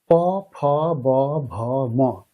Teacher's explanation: প্রত্যেকটি বর্ণ উচ্চারণের সময় দেখুন আমাদের ঠোট দুটি স্পর্শ করছে। এ কারণে এই বর্গের বর্ণগুলোকে বলা হয় অষ্ঠ বর্ণ। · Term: ওষ্ঠ বর্ণ